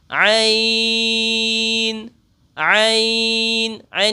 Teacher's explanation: ये हरूफ हलकी में से है। इसलिए इसको हलक से अदा करेंगे।